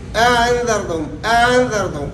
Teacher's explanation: تسہیل یعنی الف مدہ اور حمزہ کے درمیان ہم تسہیل کریں گے، نہ بالکل الف مدہ کی طرح نرم پڑھیں گے اور نہ حمزہ کی طرح سخت پڑھیں گے